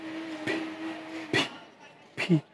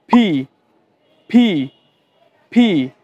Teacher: must হবে পি ফি আপনি যে মুখের যে শেপটা আছে না মুখের শেপ একটু খেয়াল রাখবেন যেন আমাদের দুইটা লিপ একসাথে টাচ করে লাইক এবং আমাদের মুখ থেকে যেন কিছু বাতাস বের হয় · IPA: /p/